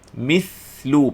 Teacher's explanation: Mislu, panjangkan bunyi sa sukun ini.